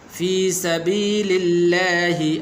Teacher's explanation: لفظ اللہ کو باریک کرنا ہے، پر نہیں کرنا ، اس لیے کہ اس کے پہلے حرف پر زبر نہیں